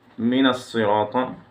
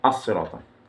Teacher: I read mina, and I joined the two words together and dropped hamzat al-wasl or joining letter. This alif joins two words together. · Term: continuation reading